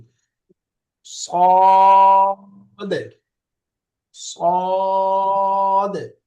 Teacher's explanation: এই শেষের দাল এটা একটু বাউন্সি উচ্চারণ হবে।